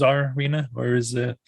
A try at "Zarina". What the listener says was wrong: Zarina. noticed that a lot of people tend to really overpronounce the czar part, so they say Czarina. Zarina. Zarina.